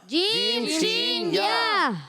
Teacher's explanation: ہاں شین مشدد ذرا رک کر ادا کریں گے، اور شین جیم شین یا یہ ادا ہوتے ہیں زبان کے درمیان اوپر تالو کے درمیان سے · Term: حروف شجریہ